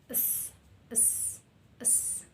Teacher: Yang pertama itu ujung lidah dengan ghariyun, dengan langit-langit keras, sya. Dan yang s itu dzalqiyun latawiyun, ujung lidah dengan gusi